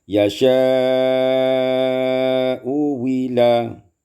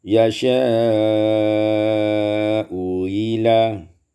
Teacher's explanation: diibdalkan hamzah yang kedua dengan waw yang khalisah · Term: ibdal hamzah tsaniyah